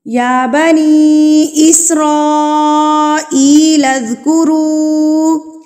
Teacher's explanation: مد منفصل یعنی کہ بڑی مد، اس کو ہم 4 حرکات کے برابر کھینچتے ہیں